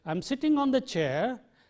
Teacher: if I use a rising tone and say I am sitting on the chair the meaning is incomplete that means the listener is waiting for something else to be